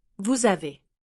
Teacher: The word vous is pronounced with a silent S unless it connects with the next word, vous avez. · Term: la liaison